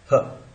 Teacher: तो vocal cords जब थोड़े से सक्रिय होते हैं और एक साउंड सीधा निकाल देते हैं, उस साउंड को अपन बोलते हैं ह। ये ह साउंड जो है, ये साउंड ग्लॉटल है, सीधा का सीधा है, ह ऐसा निकल जाता है ह।